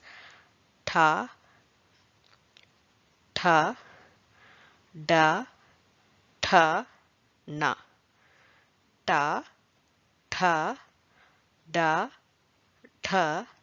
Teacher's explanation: one is retroflex retroflex consonants are articulated with tip of the tongue curled back against the palate